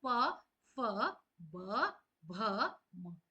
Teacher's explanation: जब हम इस वर्ग के वर्णों को बोलते हैं तो हमारे जो दोनों होठ हैं वो आपस में मिलते हैं। तो यहां पर ओश मींस दोनों होठों से प वर्ग बोला जाता है। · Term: ओष्ठ